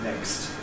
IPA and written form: nekst (next)